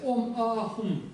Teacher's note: То есть поэтому просто лучше произносить ом, а, хум. Долгое а, висарка выпадает, не произносится.